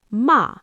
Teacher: if I say it with a sharp falling tone, ma, it means to scold.